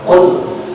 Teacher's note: Yang perlu diperhatikan dalam bacaan tadi di antaranya adalah qul, lam mati. Ingat, lam itu bukan huruf qalqalah. Jangan sampai terdengar bacaan kule. Hilangkan patul qalqalahnya sehingga bacaan yang terdengar cuma qul, bukan kule.